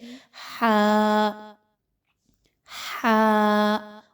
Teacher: ہا جو ہے وہ حلق کے درمیانی حصے سے ادا کیا جاتا ہے